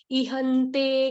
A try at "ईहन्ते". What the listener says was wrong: ईहन्ते, ई की मात्रा बड़ी है ना, इहन्ते नहीं, ईहन्ते।